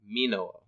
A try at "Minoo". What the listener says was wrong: Minoo. Minoo. Two O's.